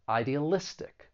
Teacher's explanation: there are five syllables the stress is on the second to last syllable